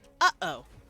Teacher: Which, for those of you who do not know what the glottal stop is, that is the catching your throat when you say, uh-oh.